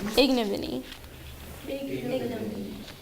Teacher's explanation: The syllable the accent's actually on the first syllable, not the second one